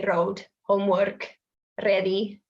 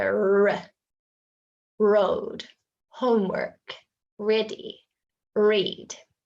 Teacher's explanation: the tongue is halfway back in the mouth and we're not tapping it or anything